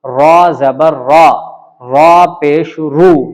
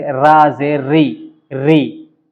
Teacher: را پر زبر یا پیش ہو تو را پر ہوگی، یعنی موٹا کر کے پڑھیں گے